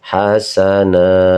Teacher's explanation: dibacanya panjang, 2 harokat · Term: mad iwad